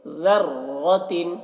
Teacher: ذال کو باریکی کے ساتھ اور را کو موٹا کر کے پڑھیں گے